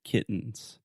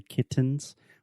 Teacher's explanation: the only difference between a stop t and a true T is with a stop T I am not aspirating